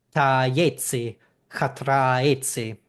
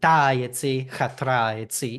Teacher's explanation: Klukhorst believes that the stress should fall on the A vowel, and Yates believes that it should be on the long vowel, that ah.